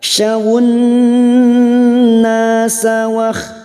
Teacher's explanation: Fokus pada huruf nun yang bertasdid mendengung selama 2 atau 3 harokat.